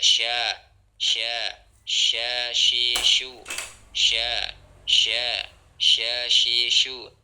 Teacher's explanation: At-tafasyi ya, udara menyebar di dalam mulut